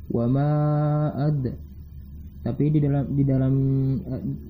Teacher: Terdapat dal sukun, maka dibunyikan qalqalah. Wa ma ad. Tetapi di sini digunakan qalqalah sughra.